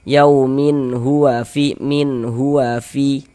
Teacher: Nah, maka cara membacanya dibaca jelas. Ini bunyi nun sukun atau bunyi tanwinnya dibaca jelas. Kemudian tidak didengungkan, tidak digunahkan sehingga dibaca pendek saja. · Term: izhar halqi